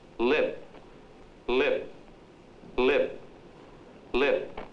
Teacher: There is hardly a flicker in the P sound in the word lip.